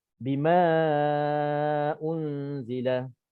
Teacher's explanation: mad jaiz munfasil sama juga qadar bacaannya 4 ataupun 5 sahaja.